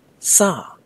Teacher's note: pronounce the verb to eat as if you're calling out somebody to get their attention with a raised voice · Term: high tone